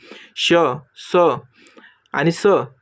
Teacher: क्रमांक ए उष्मे त्याला आपण घर्षक म्हणतो. मित्रांनो हे का तर फुफुसातील जी हवा आहे ती तोंडावाटे घासून बाहेर फेकली जाते